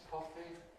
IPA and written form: ˈkɒfi (coffee)